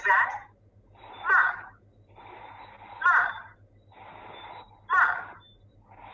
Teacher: the last tone is a falling tone